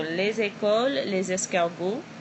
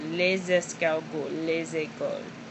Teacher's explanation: you hear a Z sound. We call that liaison, because you have the S before a vowel. So les écoles, les escargots, you hear a little bit of an S or Z sound between les and the word.